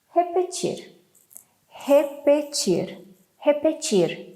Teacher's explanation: we have R sound like H at the beginning, re, and like R at the end, repetir